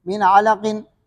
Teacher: نون ساکن کے بعد عین ہے، یہ عین میں حروف حلقی میں سے، تو یہاں پر بھی اظہار ہوگا، غنہ نہیں ہوگا